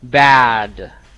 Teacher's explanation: Like the for example, if I say bad, that's a very big and wide open sound. You can improve that vowel by opening more your mouth. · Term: vowel sound